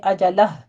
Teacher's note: اجلہ وقف کرتے ہیں تو پھر ہا کی ساؤنڈ باہر لائیے گا وقف کی صورت میں بھی